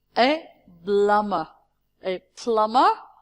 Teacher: the second B my dear is not pronounced